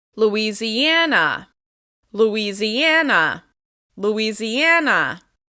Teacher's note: Like Indiana, it's stressed on the second to last syllable